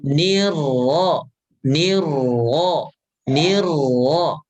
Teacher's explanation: Sifat yang ada pada ro yaitu takrir itu samarkan.